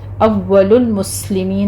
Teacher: واو اپنے مخرج سے ادا ہوگا، اس پر تشدید کرنی ہے، اول المسلمین سین پر حمس ہوگا سیٹی کی آواز کے ساتھ ، آخر پر مدارس وقفی کر لیں گے، 6 کاؤنٹ کرنا